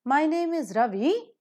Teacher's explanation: my name is in one pitch and when you say Ravi because you are ending the sentence with the full stop you just fall down if you don't fall down it doesn't look like an assertive sentence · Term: falling tone